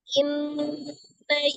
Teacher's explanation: nun tasdid itu hukumnya adalah wajibul ghunnah. Ghunnahnya adalah akmal matakun, ya, ghunnah musaddada akmal matakun.